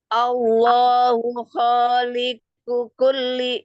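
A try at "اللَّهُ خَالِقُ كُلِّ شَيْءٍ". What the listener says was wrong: Khaliqu kulli beda kaf gitu.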